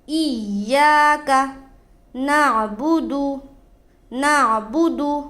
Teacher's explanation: ایاک یا کے اوپر مشددہ ہے، اس کو تھوڑا سختی کے ساتھ پڑھا جائے گا